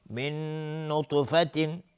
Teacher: نون ساکن بهش نون ادغام با غنه